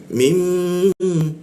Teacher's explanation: Kita tahan dua ketukan di huruf mimnya.